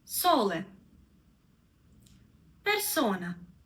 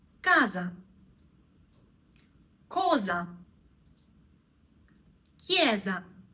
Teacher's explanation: when S comes in between 2 vowels, we read it like Z